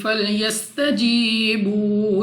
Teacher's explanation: سین تو سیٹی والی آواز کے ساتھ پڑھیں گے. یا ساکن سے پہلے زیر یا مدہ واو ساکن سے پہلے پیش واو مدہ.